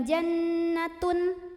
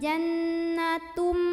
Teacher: cara membaca tanwin dhammahnya ini adalah langsung masuk atau lebur ke huruf mim. Jadi bukan jannatun tapi jannatum, langsung mim dan tahan. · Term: idgham bi gunnah